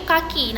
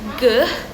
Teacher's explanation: dorsovelar ini dihasilkan oleh lidah bagian belakang sebagai artikulator dan langit-langit lunak sebagai titik artikulasi